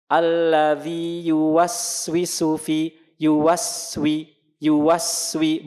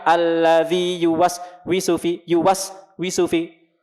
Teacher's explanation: kedua bismillahis dah namanya nanti kita bahas biskuit Bu huruf jadi ketika kita mengucapkan huruf Sin ketika dia sukun tetap ada sifatnya mengalir terus suaranya